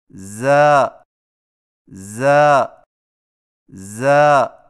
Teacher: زا کی ادائیگی میں زبان کی نوک کو ثنایا سفلی کے کناروں سے مضبوطی سے لگا کر باریک اور سیٹی جیسی آواز میں پڑھیں، یعنی ز ز ز۔